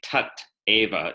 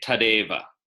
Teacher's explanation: final T turns into a final D.